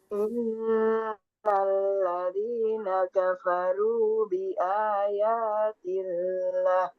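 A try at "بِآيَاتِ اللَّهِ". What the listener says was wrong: Oh ya, betul.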